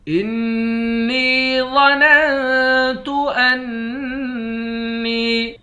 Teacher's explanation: نون مشدد پر غنہ کریں گے، نون کو یا کے ساتھ ملا کر یا کو ایک الف کی مقدار کھینچ کر پڑھیں گے، واو کو موٹا پڑھیں گے۔